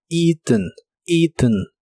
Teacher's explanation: en el pasado participio de inglés es eaten y significa comido la e a del principio se pronuncian como una I larga o doble